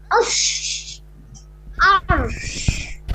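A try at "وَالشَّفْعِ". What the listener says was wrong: আশর। র উচ্চারণ হবে শেষে আশর। আশর।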